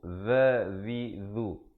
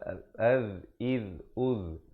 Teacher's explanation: Huruf zal, makhrajnya hujung lidah mesti keluar.